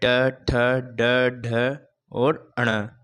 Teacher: मूर्धन्य से ट वर्ग का उच्चारण किया जाता है। जिसमें ट, ठ, ड, ढ, और ण का उच्चारण किया जाता है।